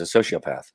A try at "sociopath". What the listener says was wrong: Is it pronounced the way you're saying it or I'm saying it? Yeah, but why do you make it sound like a SH, like socio, and I say socio?